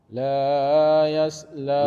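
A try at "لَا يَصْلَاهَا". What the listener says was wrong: Lahnya dua harokat saja. La yaslaha.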